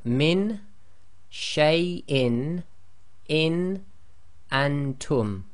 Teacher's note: So note here, when followed by any of the throat letters, then pronounce as normal, i.e. there is no assimilation of any letters and there is no Ghunna taking place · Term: Izhar